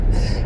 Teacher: त वर्ग के जो होंगे इनका उच्चारण दंत से होगा